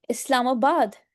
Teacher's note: सो you would से इस्लामा and then आबाद. इस्लामा को आपने जरा ज्यादा स्ट्रेस देके बोलना है, बाद को आपने थोड़ा लेस स्ट्रेस देके बोलना है, अनस्ट्रेस रखना है.